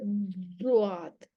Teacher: आपकी जुबान की साइड जो है वो प्रेशर के साथ ऊपर वाले दाढ़ों की जड़ों को जाके लगे, प्रेशर के साथ।